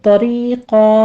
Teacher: طا کو پر پڑھیں گے، آگے را باریک پڑھتے ہوئے یا مدہ ادا کریں گے